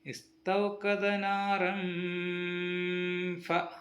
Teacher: രണ്ട് ഹർക്കത്ത് സമയം മണിപ്പിച്ച് നൂന് വെളിവാക്കാതെ മറച്ചുവെച്ച് മണിപ്പിക്കണം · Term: എഹ്ഫാ